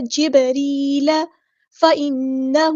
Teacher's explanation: جبریل، یہاں پہ آپ دیکھیں یا ساکن سے پہلے زیر ہے، تو یہاں پہ یا مدہ بن گئی ہے، تو مد اصلی کریں گے، ایک الف کے برابر لمبا کریں گے، اور بعد ساکن پہ یہاں پہ کلکلا ہو رہا ہے، را ہم باریک پڑھیں گے، لائٹ لیٹر ہے. جبریل فإنه، نون پہ غنہ زمانی ہو رہا ہے، ایک الف کے برابر رکیں گے.